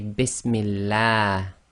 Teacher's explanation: And the reason for that is the meme is carrying a kasra. Kasra before the name of Allah makes the Lam of Allah go tarqiq, i.e. light. So you have to say the A sound, not the R sound.